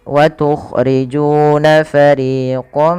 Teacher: ketika kita memasukkan tanwin ini kepada huruf mim ditahan dengan gunnahnya. Gunnah itu membunyikan huruf sampai kepada rongga hidung kita. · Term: idgham bi gunnah